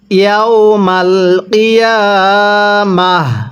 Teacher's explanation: ওয়াকফের সময় এই তাটিকে আমরা হা বানিয়ে পড়ব, এটি ওয়াকফের একটি নিয়ম।